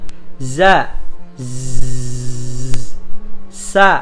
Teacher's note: suara tambahan yang keluar dengan kuat diantara ujung lidah dan gigi seri jadi ujung lidahnya sini teman-teman Oh ya ujung lidahnya sini ya